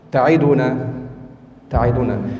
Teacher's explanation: انظري تعيدنا الكسرة ليست تامة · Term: اختلاس